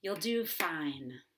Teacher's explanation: You're going to emphasize do because it's a verb, but not you'll because that's a pronoun and a helping verb combined together.